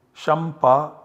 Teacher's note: So this anuswara always gets substituted by the savarna of pa. So the nasal savarna of pa is ma. So the output generated is shampa with ma.